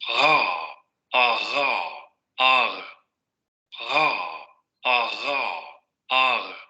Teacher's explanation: Esta es la de la variante parisina, uvular fricativa, aquí no le pone aproximante, pero sabemos por la otra tabla, fricativa aproximante sonora.